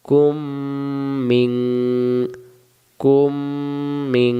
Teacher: এখানে মিম সাকিনের বাম পাশে তাসদিদওয়ালা মিম পাইলে মিম সাকিন বাদ দিয়ে তাসদিদওয়ালা মিম ধরে গুণনা করে পড়তে হয়। কু মিলবে মিমের সাথে, কুম মি, মি মিলবে নুনের সাথে, মিং।